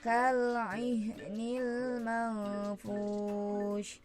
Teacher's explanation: ada nun sukun bertemu huruf fa, maka disebut dengan ikhfa, harus didengungkan ya